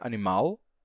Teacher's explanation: todos os falantes de português igualaram e a pronúncia nesse caso as pessoas em Portugal dizem ainda animal com l com som de L